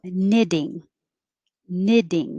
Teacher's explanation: those t's sound like d's